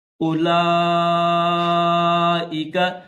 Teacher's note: الف کے بعد واو خالی ہے تو اس واو کو نہیں پڑھیں گے